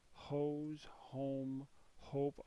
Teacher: all have that long O sound. They're all saying the vowel's name.